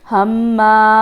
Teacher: मीम पे तशदीद है तो हमने गुन्ना करना है, यहाँ पे थोड़ा सा स्टे करेंगे, हम्मा।